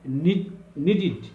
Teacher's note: the ed ending pronounced as a new syllable id